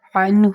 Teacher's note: نون ساکن آ گیا اور اس کے بعد ہا آ گیا، تو یہاں پر ہوگا اظہار